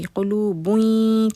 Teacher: با کے اوپر جو تنوین ہے وہ یا میں جا کے مکس ہو جائے گی ، قلوبوئیں کر کے اس طرح سے یا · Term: ادغام